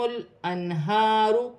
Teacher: من تحتہم الانہار، لام ساکن سے پہلے، لام ساکن ہے، لام کو اپنے سے پہلے اس کی حرکت کے ساتھ ملا کر پڑھا جائے گا۔ ہا پر کھڑی زبر ہے، سینے والی ہا ہے، را موٹی پڑھی جائے گی اور را پر پیش ہے۔